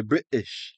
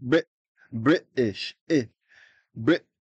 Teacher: with a cockney accent they'll say British you hear it's just a stop you don't see the T it's just Brit British Brit it's · You hear it's just a stop. You don't say the T. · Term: glottal stop